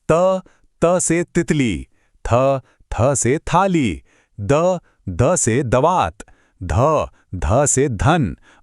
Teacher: इनका उच्चारण करते समय जीभ सीधे दांतों को छूती है, इसीलिए तो इन्हें दंत्य ध्वनियां भी कहते हैं।